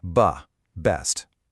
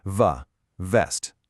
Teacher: For the B sound, like in best, your lips press together and then release. Ba, best. But for V, like in vest, your top teeth have to touch your bottom lip.